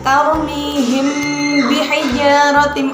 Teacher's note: Syafawi artinya bibir, berasal dari kata syafatun, yang mana samar di bibir. Cara membacanya berarti harus samar dengan mendengung pada bibir. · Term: Ikhfa Syafawi, ikhfa syafawi